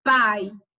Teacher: Quando a gente fala a palavra pai, a letra A, que é a vogal, o tom dela é mais intenso, é mais forte. Já a semivogal, que vai ser a letra I, ela vai ter um som mais fraquinho, mais secundário.